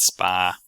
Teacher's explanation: no real distinction between spar and spa, for example, which would both come out spa. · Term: loss of R after vowels